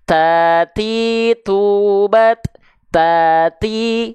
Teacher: hams itu artinya mengalir nafas tapi pengkhususan untuk huruf ta Dia Hanya berupa perecikan-perecikan nafas saja jadi jangan sampai berlebihan ya jangan sampai berlebihan cukup kita lafalkan